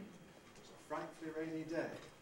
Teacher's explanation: It was a frightfully rainy, there's a head. And we've got the stress within the head on rain.